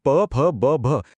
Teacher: हे तर ओठ मिटल्याशिवाय बोलताच येत नाहीत म्हणून ते झाले ओष्ठ